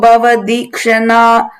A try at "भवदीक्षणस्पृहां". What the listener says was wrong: Again, you said na there. Bhavadi Kshanna Spriham. I think the best way is when there is a ah sound, then you put an extra a, then to say this ah, you know.